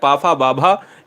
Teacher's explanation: पावर्ग का उच्चारण स्थान होता है, ओष्ठ होता है